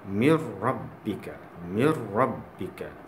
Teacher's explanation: Mir, nun tu seolah-olah tak ada lah. Sebenarnya ada, tapi kerana hukum idgham bila gunnah ni, hukum idgham bila gunnah ni, huruf nun seolah-olah supaya tak ada lah.